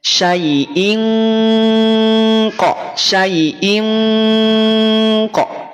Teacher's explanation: qf selain Dia samar yang kuat juga samar yang tebal artinya ketika mengucapkan ikhfa pangkal lidah kita sudah naik